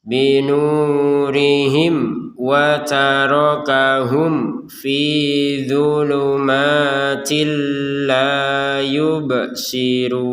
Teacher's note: mim sukun bertemu fa, mim sukunnya dibaca dengan jelas karena sukunnya tertulis.